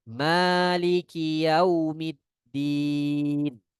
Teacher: Nah, kebanyakan mereka membacanya dengan ma yang 3 harokat atau 4 harokat. Nah, ini tidak boleh. Ya, ma-nya hanya 2 harokat.